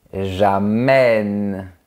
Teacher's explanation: Ici, on entend que l'accent grave change la prononciation. Il ouvre le son de la lettre E.